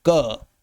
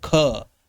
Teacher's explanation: क बोलने में कम हवा निकलेगी, क। वहीं ख बोलिए, ख, हवा ज्यादा निकलेगी। हथेली मुख के सामने लगा के देखिएगा, आपको मालूम हो जाएगा।